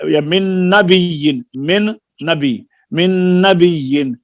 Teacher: ادغام صغیر مثلین کہتے ہیں، یعنی دو حرف ایک جیسے حرفوں کا ادغام